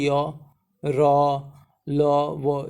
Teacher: ठीक है, जैसे अगर आप उच्चारण करोगे यो, ठीक है, बोलो तो यो, र, ल, वो, ये क्या होता है? इनके उच्चारण के समय ना जीभ जो है, हमारी जो जीभ है ना, वो मुंह में किसी भी भाग को टच नहीं करती है। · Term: अंतःस्थ व्यंजन